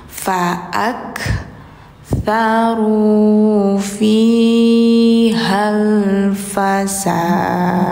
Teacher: Kalau di akhirnya ada huruf qalqalah, ini kan salah satunya ada dal ya, maka harus pantul akhirnya teman-teman.